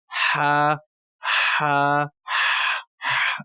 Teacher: यह हलक के दरमियानी हिस्से से अदा होता है · یہ حلق کے درمیانی حصے سے ادا ہوتا ہے